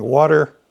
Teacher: We're always saying water, and it's got a classic flap T.